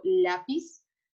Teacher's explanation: por ejemplo lápiz no termina con n s o vocal pero la sílaba tónica es decir la sílaba que se escucha más fuerte es la penúltima